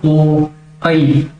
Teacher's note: आपका मुख जो है वो लगभग आधा ही बंद रहता है। इसलिए इनको हम किस श्रेणी में रखते हैं, अर्धसंवृत की श्रेणी में रखते हैं।